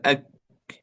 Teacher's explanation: صحيح أنه من أقصى اللسان مخرجه، لكن أقصاه لا يرتفع إلى أعلى، يبقى إلى أسفل، أك. لكن القاف أو نجد ارتفاع في أقصى اللسان، لكن الكاف لا يستعلي به أقصى اللسان.